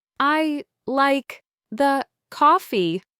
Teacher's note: He was putting equal stress on every single word.